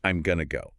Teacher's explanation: That sentence gets shortened and linked naturally to, I'm going to go. The am contracts and going to reduces.